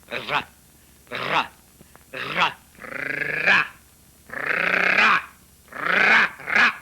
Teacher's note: Oh. L'air, en portant le bout de la langue jusqu'au haut du palais, de sorte qu'étant frôlée par l'air qui sort avec force, elle lui cède et revient toujours au même endroit, faisant une manière de tremblement